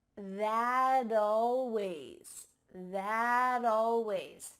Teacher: we link together words by making the final t change into a d